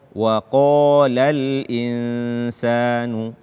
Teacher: Sempurnakan ketebalan qaf tersebut apalagi ketika dia berbaris fathah dan setelahnya alif.